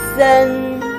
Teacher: It's a combination of s and n, first tone.